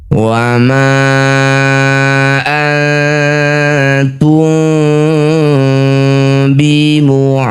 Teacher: Ketika mengucapkan mim bibirnya rapat tapi rapatnya samar. Masih ada celah satu lembar kertas. tidak betul-betul rapat. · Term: ikhfa syafawi